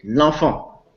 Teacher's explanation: If you use the article le enfant, but you have a contraction, the vowel of the article le vanished in contact with the vowel beginning the word enfant. So we say l'enfant in one word.